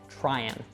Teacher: And maybe you already know as well, when we have an ing word like trying, oftentimes we'll drop that G sound. So it just becomes tryin, ending with an N. And then it links onto the next word.